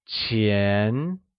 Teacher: is pronounced with the mid rising tone